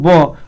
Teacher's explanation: ब ओष्ठ से बोला जा रहा है